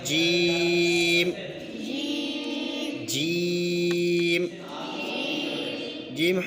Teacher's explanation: زبان کے درمیان اور تالوں کے درمیان سے جیم ادا ہوتا ہے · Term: حرف شجریہ